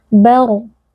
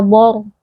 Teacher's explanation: pastikan huruf ba-nya tipis, ba kemudian masuk ke ra sukun yang tebal